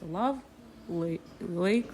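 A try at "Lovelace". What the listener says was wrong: Лейс. Наверное, как S читается.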